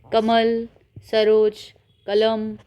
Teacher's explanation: ना तो हम नाक का सहारा ले रहे ना तो हम नाक से बोल रहे हैं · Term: निर्णुनासिक